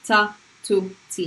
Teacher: If these nails, these are your teeth, the ta is simply touching the back of your teeth